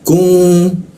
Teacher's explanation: Rijum, ku diisi ke tenggorokan. Lidahnya diturunkan sehingga rongga udara terbuka dan ada hembusan udara dia.